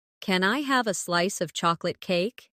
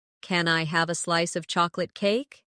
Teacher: Stress chocolate cake so it sounds delicious and inviting.